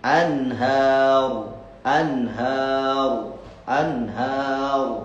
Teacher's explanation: Kalau waqaf di situ ro-nya tafkhim